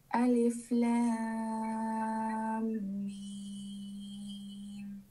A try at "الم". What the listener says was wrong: There is a gunnah that you missed. After the mad of the lam, there is a gunnah. Idgham bi gunnah. Alif Lam Mim. Notice Lam.